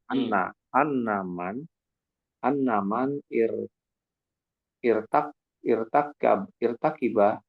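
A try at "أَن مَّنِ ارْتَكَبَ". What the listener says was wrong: Gabungkan bacanya. Ini hamzah wasal. Anna manir takaba. Manir takaba.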